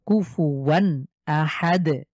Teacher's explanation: এরপরে দেখেন, এটা খুব পরিচিত, আমরা আলহামদুলিল্লাহ সূরা ইখলাসে দেখি, কাফ পেশ কু, ফা পেশ ফু, ওয়াও 2 জবর ওয়ান, তানভিনের পর হামজা আছে, গুণনা ছাড়া স্পষ্ট করে পড়বো।